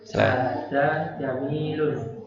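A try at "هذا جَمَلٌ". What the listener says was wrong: Jamalun Pak. Jamalun enggak panjang. Enggak panjang Pak. Hadza jamalun. Kan enggak ada ini huruf panjang ya.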